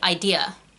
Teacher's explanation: So a lot of Brits with English accents will say idea. There's no R on the end of idea. So in an American accent, it should be idea, because you wouldn't pronounce the R because the R's not there.